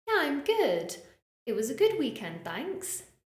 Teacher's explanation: positive statements yeah I'm good it was a good weekend thanks our intonation tends to rise